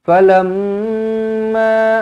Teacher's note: mim sabdu di sini didengungkan dengan dua harakat wajibul gunah